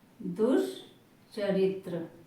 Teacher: यहाँ पर विसर्ग का आधा तालव्य सा हो रहा है।